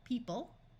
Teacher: the O is going to completely disappear